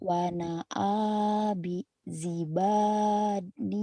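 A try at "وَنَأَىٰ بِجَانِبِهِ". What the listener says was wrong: Bija terbalik bukan jiba, bija ba dulu. Memang ini numpuk ya, numpuk. Wana abijani bihi.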